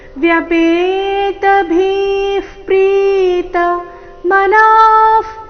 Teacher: ಭಿ ಮಹಾಪ್ರಾಣ ದೀರ್ಘ ಹೇಳಿದ ನಂತರ ವಿಸರ್ಗದ ಉಚ್ಚಾರಣೆ ತಗೊಳ್ಳಬೇಕು